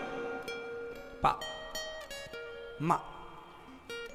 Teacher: आप बिना होठों को मिलाए पा बोलिए। पा बोलेंगे तो दोनों होंठ मिल जाएंगे, मुंह बंद होगा। · बिना दोनों होठों के मिले पा निकल ही नहीं सकता।